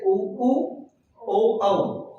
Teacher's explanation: ऐसे स्वर जिनके उच्चारण में होठ व्रत के आकार का स्वरूप लेता हो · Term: व्रतमुखी स्वर